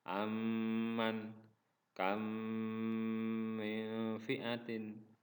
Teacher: Idgham mimi ialah apabila mim sukun bertemu dengan mim. Maka cara membacanya adalah seperti menyuarakan mim rangkap atau ditasydidkan dan wajib dibaca dengung